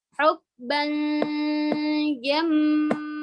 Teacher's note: didengungkan karena di situ hukumnya ikhfa. Didengungkan dan disamarkan ke huruf jim.